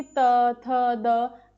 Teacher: इनको बोलते वक्त हमारे दांतों के पास या दांतों से मतलब वो टच हो रही है हमारी जो जीभ है। तो इन वर्णों का उच्चारण जब होंठ और दांत के संपर्क से होता है तो ध्वनियां उत्पन्न होती हैं। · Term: दंत्य वर्णों